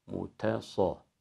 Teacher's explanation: Burada ilk kelimeyi okurken sat harfini T harfine transfer etmemek gerekiyor. Yani sat harfinin kalınlığını T'ye sirayet ettirirsek muta. Mutasaddiqine olur, te kalınlaşır. Te ince, sat kalın.